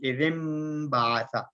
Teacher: اصل میں اذن نون تھا، نون ساؤنڈ تھی، لیکن ہم نے جو ہے میم ساؤنڈ یہاں پر ادا کی